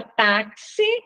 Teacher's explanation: na palavra táxi, o X tem som de KS, então, uma letra só que representa dois sons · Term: dífono